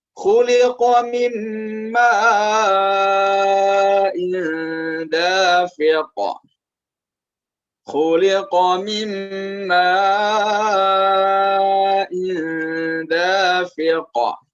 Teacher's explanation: di akhirnya ada huruf qaf yang itu adalah huruf qalqalah sehingga harus dipantulkan bunyinya.